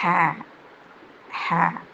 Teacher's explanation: തൊണ്ടയുടെ മധ്യഭാഗത്തിൽ നിന്ന് വരുന്ന അക്ഷരമാണ് ഹ.